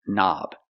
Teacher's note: turn knobs we see the word knob has a k and the K is silent don't pronounce the k start with the n Sound